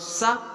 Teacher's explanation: सा वत्स ध्वनि है, यानी कि ओंठ से दंत से निकलती है ये सा ध्वनि।